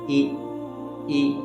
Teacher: آواز اور ہونٹوں کے جھکاؤ سے زیر کی ادائیگی ہوتی ہے